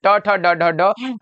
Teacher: ड का उच्चारण स्थान मूर्धा होता है।